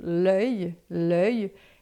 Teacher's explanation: L'œil, que é uma boca de O e fala E, fica l'œil.